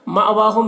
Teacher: حمزہ ساکنہ ہے، جھٹکا لگے گا۔ واو میں کھڑا زبر ہے جو الف مدہ کی طرح ہے۔